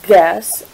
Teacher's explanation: When I say the word guess, I notice that I'm not actually voicing the U, I just go straight to the S sound